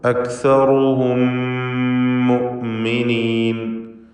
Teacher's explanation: അക്സറുഹും അവിടെ സാക്കിനത്ത മീമാണ്. ശേഷം മീമ് വന്നതുകൊണ്ട് മണിച്ചുകൊണ്ട് ശദ്ദുള്ള മീമാക്കി ലയിപ്പിച്ചുച്ചരിക്കണം